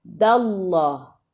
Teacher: sebelum Allah baris atas kena baca tebal